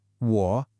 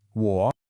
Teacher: It's like a little check mark shape with your voice. The common mistake is to only go down. · Now the tone here is the third tone, which can be a real challenge for learners. The best way to think of it is a dipping tone. Your voice has to go down and then come back up. 我. It's like a little check mark shape with your voice.